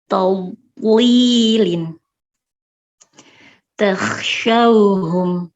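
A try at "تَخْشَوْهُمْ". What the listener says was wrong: Oke, masih PR huruf ho-nya. Posisi mulutnya perhatikan.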